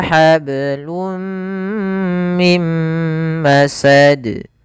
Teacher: Kemudian pada lafal masad, di sini ada qalqalah lagi, yaitu tidak boleh ditambah hamzah atau dia tidak dipantulkan. Ini kesalahan ketika membaca huruf-huruf qalqalah.